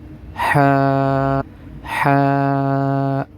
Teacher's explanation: جو پہلے والا ہا ہے یہ درمیان والے گلے کے حصے سے نکلے گا